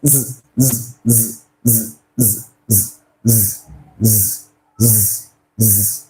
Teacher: Once again, I noticed that my vocal cord vibrated, right? Which means that this sound is voiced.